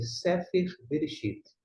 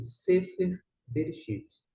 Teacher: Percebeu que o E foi pronunciado ora aberto, ora fechado?